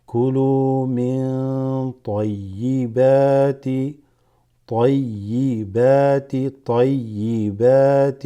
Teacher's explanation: This noon has a sukun followed by a ta, makes it ikhfa.